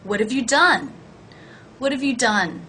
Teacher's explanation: notice that the H is dropped